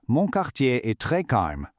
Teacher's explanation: give it that very subtle soft uh sound at the end when you pronounce it. Not a hard stop, just a gentle breath to make it sound natural.